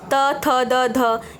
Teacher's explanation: ये हमारे दांत को छू रहे हैं। यह स्पर्शी व्यंजन होते हैं।